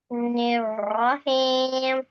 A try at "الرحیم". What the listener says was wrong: ایم نہیں ہے، اس کو حلق سے پڑھنا ہے. رحیم.